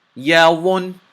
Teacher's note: Now notice I held the sound of the noon in my nose for a little bit. I didn't say yawunu. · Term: making gunna